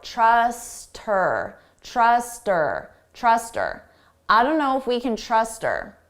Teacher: we can get rid of that H sound and it just sounds like her. Trust her.